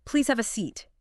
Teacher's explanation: Seat often uses that falling tone, too. It gives it a sense of finality, authority, maybe. So the falling sound is like a signal to the listener saying, "Okay, I'm done with this bit of information.